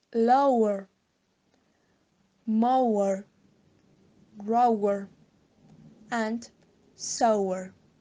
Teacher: The last triphthong is awa. The first and the last vowel is o. This is central open mid. The next vowel is u. This is near central, and the lips are rounded.